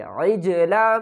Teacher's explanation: جیم جب ساکن ہوتی ہے تو اس کے اوپر ہم قلقلہ کر کر پڑھتے ہیں، یعنی جیم کو ہلا کر پڑھیں گے